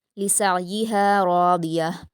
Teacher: لسعیہا میں عین ساکن کی آواز کو سین سے ملاتے ہوئے حلق سے ادا کریں گے اور راضیہ میں را اور ضاد کو پر پڑھیں گے۔